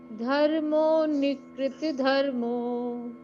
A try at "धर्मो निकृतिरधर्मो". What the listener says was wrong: नहीं रधर्मो पढ़ना था, र बोलना है।